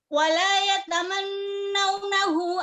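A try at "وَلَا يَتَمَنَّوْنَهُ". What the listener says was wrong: Wala yatamannawnahu, panjangkan bunya ya.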